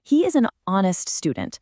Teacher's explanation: Even though the word honest starts with the consonant letter H, that H is totally silent.